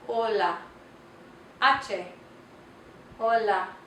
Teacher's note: The letter H in Spanish is H, H, and it's silent. It doesn't make a sound. So anytime you see the letter H, pretend it's not there.